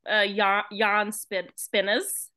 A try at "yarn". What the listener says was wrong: I sound like you're saying yawn, like, oh.